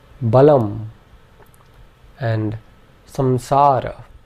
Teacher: The Anuswara is a nasal M sound similar to the M at the end of the English word some. Its exact nasal pronunciation actually differs slightly according to certain grammar rules, but at this point, for our purposes, we can pronounce it like a nasal M.